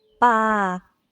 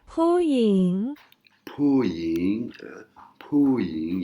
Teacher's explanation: Et là, par exemple, le son, on va prendre le son Puying, qui veut dire femme, hein, qui est avec la lettre Popung. Et là, c'est pas le même son, c'est un P avec un H inspiré, avec de l'air qui sort